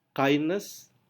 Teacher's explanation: silabel pertama mendapatkan primary stress, silabel kedua mendapatkan secondary stress. Berarti silabel pertama stresnya lebih tinggi daripada silabel kedua.